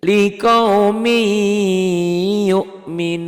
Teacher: Tergantung setelah N-nya, setelah tanwin atau nun matinya ketemu huruf apa. Kebetulan ini setelah N-nya ketemu Y, jadi bunyi N-nya hilang masuk ke Y. · Ini idgham bigunnah. Ditulisnya liqaumin yu'minun, dibacanya tuh berubah, N-nya hilang ditelan Y, liqaumi yu'minun kalau dihentikan.